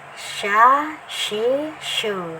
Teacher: di mahrusnya di tengah lidah ya, tengah lidah, tapi dia tidak terlalu menempel ya ke langit-langit ya, dia ada anginnya menyebar ya